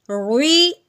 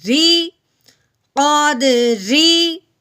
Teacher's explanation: رو کے نیچے زیر آ جائے تو اس رو کو باریک پڑھتے ہیں۔ شروع کرتے وقت سٹارٹ کے وقت ہم نے اس کو موٹا رکھنا ہے، لیکن بعد میں جو اس کا اصل آواز نکلے گی وہ ہم نے باریک کرنی ہے۔